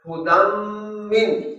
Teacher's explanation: من مثلہ مقاما محمودا، ہدی من، یہاں بھی تنوین کے بعد میم ہے تو یہ ہدن کی آواز نون کی آواز میم میں تبدیل ہو جائے گی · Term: ادغام